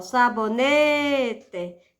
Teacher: Na palavra sabonete, a sílaba tônica é a penúltima. Olha só, sabonete.